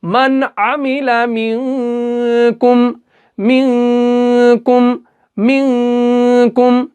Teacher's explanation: ظاہر کر کے پڑھیں گے. ہم یہاں پہ گنہ نہیں کریں گے، بغیر گنہ کے پڑھیں گے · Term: اظہار